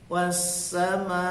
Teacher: itu maknya panjang ya, 5 harokat atau 5 ketukan. Wassamai, ma panjang ya, dengan kecepatan yang sama.